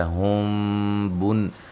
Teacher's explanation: میم ساکن کا اخفا ہے، غنہ کریں گے